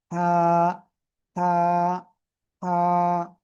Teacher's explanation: এই যে গলার মধ্যখান খেয়াল করবেন, এই গলার মধ্যখান থেকে গলার মধ্যখানে চেপে আপনার এক আলিফ টানিয়া এই অক্ষরটা উচ্চারণ করতে হবে। মুখ দিয়ে হালকা বাতাস বের হতে হবে, চিকুন আওয়াজে পড়তে হবে।